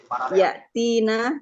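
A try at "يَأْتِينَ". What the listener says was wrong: Ya, ya'tina. Panjang ya.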